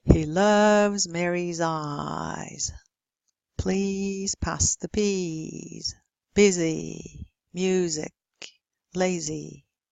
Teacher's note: The voiced z is first and foremost weak.